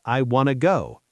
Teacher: In fast speech, want to becomes wanna.